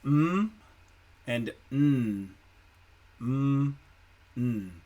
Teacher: all of your air is actually coming out of your nose